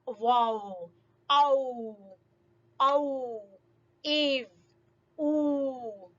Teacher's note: دونوں ہونٹوں کو اس طرح سے گول کریں گے کہ بالکل ایک تھوڑی سی جگہ جو ہے وہ باقی رہ جائے. پورے ہونٹ سائڈوں سے مل جائیں گے, درمیان میں تھوڑی سی جگہ جو ہے وہ خالی رہ جائے گی, تو ادا ہوگا واو